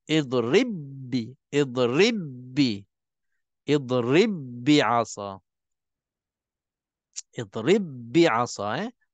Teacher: Maka diidghamkan dan sebutkan satu huruf ba bersabdu saja. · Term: idgham mutamathilain